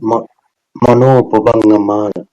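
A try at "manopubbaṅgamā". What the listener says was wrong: Okay, but there's no rhythm there. Say it again, slowly. This one is long. Mano pumbangama. Mano pumbangama. Where's the stress? Here? What's the rule for stress? Stress goes on the penultimate syllable, second to last. If that syllable is long, is this one long? Is ga long? Ga is long?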